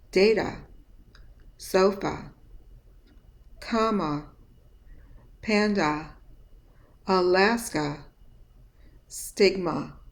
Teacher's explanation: examples of a at the end of multisyllable words with a schwa